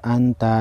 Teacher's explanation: نون ساکن کو غنہ کریں گے اس کے بعد حروف اخفا میں سے تا ہے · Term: اخفائی حقیقی